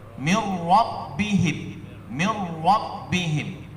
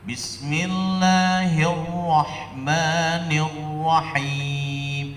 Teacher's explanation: Mirrabbihim, hanya satu getaran lidah.